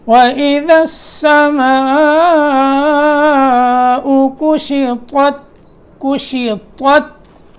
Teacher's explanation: یہ دیکھیں تو کو موٹا کر کے پھر تا کو باریک کرنا ہے